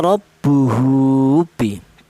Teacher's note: Ini dibaca panjang. Yaitu panjangnya seperti mad thobi'i. Yaitu satu alif atau dua harakat atau dua ketukan.